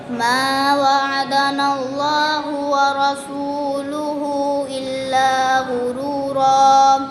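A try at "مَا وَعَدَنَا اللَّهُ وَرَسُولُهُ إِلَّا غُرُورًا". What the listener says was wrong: मद को लंबा नहीं कर रहे बेटे।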